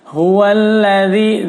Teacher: Huwallazi khalaqalakum huwallazi ha besar ya. Huwallazi dzal jelas di ujung lidah.